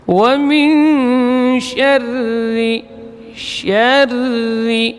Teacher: Kemudian ra huruf takrir, syarri, ketika bertasydid maka disembunyikan getarannya, jadi baca tipis. Wa min syarri, syarri, ya, tipis, ri.